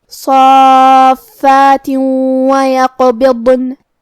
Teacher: کلمت ویقبضن، واو حروف الادغام بغنہ میں سے ہے اور ادغام کا معنی ہے حرف کو حرف میں داخل کرنا، لہذا ہم یہ تنوین کو واو میں ملا کے غنہ اور تشدید کے ساتھ یہ حکم کو ادا کریں گے